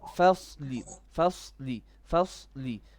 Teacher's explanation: the fa has to be flat. The work happens on the sad only.